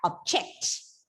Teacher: when you use the same word as a verb, the stress is shifted to the second syllable, making the word pronounced like object.